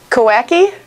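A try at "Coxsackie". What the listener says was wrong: Kosaki. The X kind of goes to an S. Kosaki, New York.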